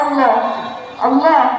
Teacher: عند البدء بها تكون اللام مفخمه